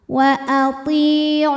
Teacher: Lam jalalah dibunyikan secara tafkhim sebab harokat huruf sebelumnya dhammah, maka lamnya tebalkan